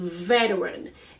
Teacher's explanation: we don't need to pronounce the T in veteran